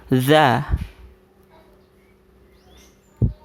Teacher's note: Huruf za itu dibacanya sambil agak menggigit lidah ya, bagian depan.